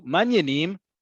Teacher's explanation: that sing-song that up and down indicates a genuine interest in the person